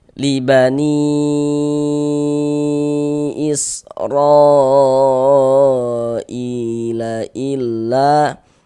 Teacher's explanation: Panjangnya mad jaiz munfasil itu dibaca dengan panjang 4 sampai dengan 5 harokat. Namun ada juga yang membolehkan dibaca dengan 2 harokat seperti itu.